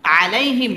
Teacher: এটা হচ্ছে মিম সাকিনে ইজহারে খাস এখানে গুন্নাহ ছাড়া পড়তে হবে